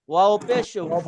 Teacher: সবাই একটা বিষয় খেয়াল রাখবেন যে ওয়াও ওয়াও উচ্চারণ করতে ঠোঁট গোল হয়। হ্যাঁ, ওয়াও এরপরে ওয়ের উপরে পেশ ওয়াও পেশ পেশ পেশ ভু উচ্চারণ করতেও গোল হয়, তাহলে ওয়াও গোল পেশও গোল, মানে এখানে সম্পূর্ণই ঠোঁট গোল হবে। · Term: ওয়াও পেশ ভু